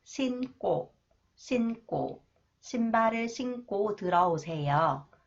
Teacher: when 기역 comes after the final consonants 니은 in an adjective, it is pronounced 끄 sound, 쌍기역, 끄 sound.